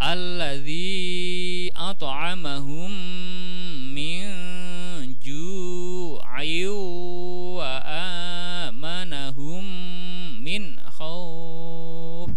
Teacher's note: in tanwin ketemu wawu masuk sambil dengung, idgham bigunah